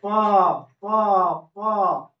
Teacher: यह लिप्स जो है एक बार सट रहा है और एक बार हट रहा है, तो इसीलिए इसको हम लोग बोलेंगे प यानी ओठ।